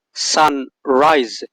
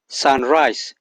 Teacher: sounds may be lost in natural speaking that is very normal instead of hearing an intentional sun rise with the z sound you may hear Sunrise with the S sound